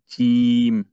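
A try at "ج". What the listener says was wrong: হ্যাঁ, একটু শক্ত করে, আরেকটু শক্ত।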